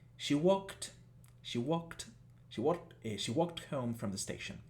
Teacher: tenemos un sonido final de K por lo tanto vamos a pronunciarlo con una t al final